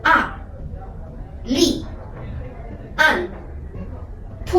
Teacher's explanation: tone 4, it sounds like fall from the highest and to the lowest very fast. So we can describe it as 5, 1.